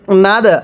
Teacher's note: এই যে দালের মধ্যে আমরা কলকলা করব, দালে যদি সাকিন হয় কলকলা করে পড়তে হয়।